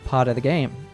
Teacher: the southern accent tends to use an American tea like other American accents pronounces the tea in part with a D sound · drops the F in of so we are left with the schwa sound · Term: Flop tea